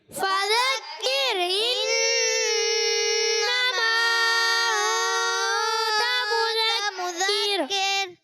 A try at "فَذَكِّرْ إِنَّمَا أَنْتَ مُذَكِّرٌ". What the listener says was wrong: جی غنہ چھوڑ دیا. انتا کا غنہ آپ سے چلا گیا، تو آپ نے جلدی کی اور اسی لیے میں سمجھا رہا تھا غنے کو آپ نے پورا کرنا ہے.